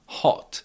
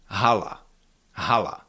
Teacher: H in Czech it is a little bit stronger and more voiced.